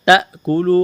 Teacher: حمزہ ساکن ہے تو تا کو حمزہ کے ساتھ ملانا ہے، جھٹکا دینا ہے۔ تأکلو، کاف کو باریک کرنا ہے، واو مدہ ہے، کھینچنا ہے۔